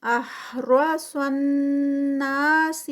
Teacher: سن پہ نون جو ہے وہ مشدد ہے تو غنہ ہوگا، اور پھر آگے نا بھی 2 کاؤنٹس کا ہے۔ · علی لا پہ 2 کاؤنٹس کھڑی زبر